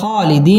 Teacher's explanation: মধ্য তাবাই এক আলিফ টেনে পড়তে হবে